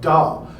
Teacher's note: We don't have to release over here from d to ah because duh is already voiced. I don't have to turn it off in order to turn it on.